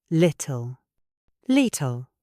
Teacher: The T is followed by an L. In British English, we explode the T into the L.